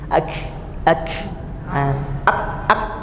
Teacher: Kalau ini pantulan, ini mengalir banyak atau hembusan, ya, di sini. Dia tidak menutup full makhrajnya. Jadi ada bunyi seperti hembusan angin tipis. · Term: huruf kaf